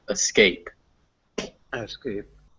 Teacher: Remember that the emphasis is on scape. The at the beginning is just a escape.